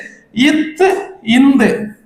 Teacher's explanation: மேல்வாய் பல்லின் அடியை நாக்கின் நுனி பொருந்துவதால் பிறக்கும் எழுத்து